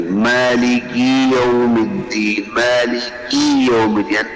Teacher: المبالغۃ فی کسر الکاف. کاف کے کسرے کے اندر مبالغہ کرنا جس سے وہ یا مدہ بن جاتی ہے